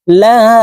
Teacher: লা এখানে তিন আলিফ টেনে পড়তে হবে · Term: মুনফাসিল